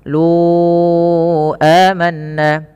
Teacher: panjangkan huruf lu sepanjang empat harakat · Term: Mad Jaiz munfasil